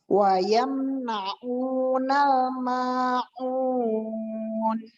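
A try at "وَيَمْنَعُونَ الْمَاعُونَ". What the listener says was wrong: Huruf ainnya dilatih lagi, dijelaskan lagi. Mimnya berikan sifat tawasud, mim sukun, alirkan. Wayamna'unal ma'un.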